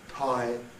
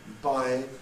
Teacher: phonologically distinguishable by presence or absence of voicing. There are other differences too, but this is the sort of underlying difference between them.